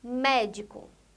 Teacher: Médico, a sílaba tônica é a primeira sílaba, o mé, médico.